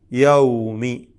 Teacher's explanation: ഈ വാവിന്റെ മഹ്റജ് രണ്ട് ചുണ്ടുകളാണ് യൗമി രണ്ട് ചുണ്ടുകൾ ഈ രണ്ടു ചുണ്ടുകളിൽ നിന്നും ഉച്ചരിക്കപ്പെടുന്ന വാവ് യൗ യൗ